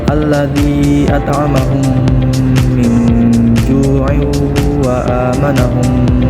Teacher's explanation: Cara pengucapannya harus disertai dengan gunnah dengung dengan memasukkan hukum mim mati ke dalam huruf mim sesudahnya. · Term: idgham mimi